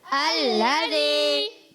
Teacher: الذی لام مشدد ہے, ذرا رک کر ادا کریں گے. یا سانگ سے پہلے زیر ہے, الذی ایک الف کھینچنا ہے.